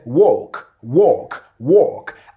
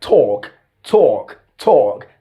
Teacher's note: that's the british standard okay the rp standard the long or sound